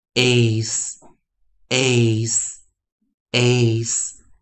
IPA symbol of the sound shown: eɪs